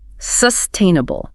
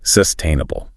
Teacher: squarely on the second syllable